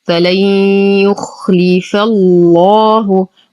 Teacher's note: لدينا نون ساكنة وبعدها حرف الياء، الحكم إدغام ناقص مع غنة كاملة. · نغلظ اللام في اسم الجلالة لأنها سبقت بفتح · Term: اللام المغلظة